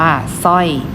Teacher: สร้อยออกเฉพาะเสียงซอเสืออ่านว่าสร้อย